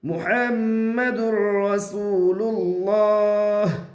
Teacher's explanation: دال را پیش در، محمد۔ یہاں تنوین کے بعد را ہے، اس لیے تنوین کو را سے ملا دیا، اسے تنوین باقی نہیں رہتی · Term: ادغام بلا غنہ